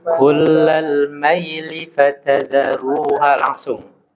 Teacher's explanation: Di kalimat kullal maili, linya nggak boleh dipanjangkan. Kullal maili fatadharuha, langsung.